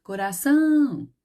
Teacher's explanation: Observe que o são é a sílaba em que eu demorei mais, né? Que eu fiquei mais, ela foi a mais forte da palavra. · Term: sílaba tônica